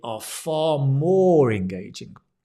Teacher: far is the emphasis